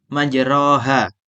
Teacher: Imam Hafiz membacanya dengan bacaan imalah alif setelah ro. Berdasarkan hal ini ro menjadi tipis, dibaca tipis. Imalah ialah suara di antara alif dan ya.